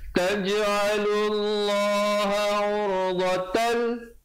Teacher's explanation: Taj'alullaha urdatan, di situ idgham bila gunnah, masuk tanpa dengung